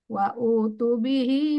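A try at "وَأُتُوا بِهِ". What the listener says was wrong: Wa utu begitu panjang Bu, pendek. Wa utu.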